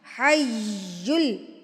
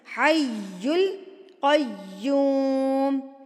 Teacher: تشدید یعنی کہ شدت سے پڑھنے والا حرف، حی، حیل، حیل نہیں ہے یہ، حیل جلدی سے اس کو سپیڈ میں نہیں پڑھنا، حی القیوم، حی یا پہ آپ نے زور دے کے پڑھنا ہے اس کو